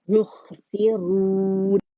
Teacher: और रॉ जो है वो मुखफ़्फ़म होगी